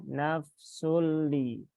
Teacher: Lam bertasydid jangan ditahan lama-lama. Langsung saja nafsulli.